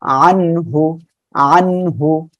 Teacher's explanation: গুন্না বাদে আমরা গুন্না ছাড়া স্পষ্ট আকারে পড়বো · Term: ইজহারের অক্ষর